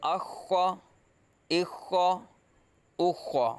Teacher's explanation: حروف مستعلیہ میں سے پور پڑھیں گے